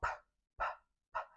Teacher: Tem até aquela macetezinho que você coloca a folha de papel na frente, e aí você tem que falar o pá, pá, pá, e aí a folha tem que mexer, porque você está soltando o ar. Então, ó, segura o ar e aí solta o ar. Né? E é sem voz.